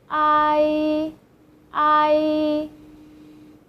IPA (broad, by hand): āi